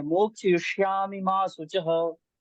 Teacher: श्लोक तो आपका बिल्कुल सही है, लेकिन मोक्षयिष्यामि माँ में जो इकार की मात्रा ह्रस्व मतलब छोटी है, दीर्घ नहीं है, बड़ी ई की मात्रा नहीं है